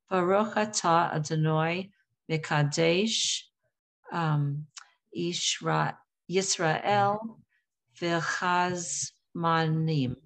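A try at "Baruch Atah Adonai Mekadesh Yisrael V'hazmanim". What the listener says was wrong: Nice.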